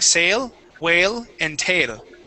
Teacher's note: you're still using an A sound, a Spanish A, saying sail, whale, and tail